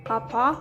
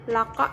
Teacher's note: Konsonan hambat velar tak bersuara K dilafalkan dengan menempelkan belakang lidah pada langit-langit lunak, sehingga udara terhambat di siro dan kemudian dilepaskan secara mendadak.